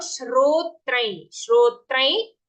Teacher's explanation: it is not Shotrai or Srotrai. Half sha joined to ro. Shro. Followed by the ear sound.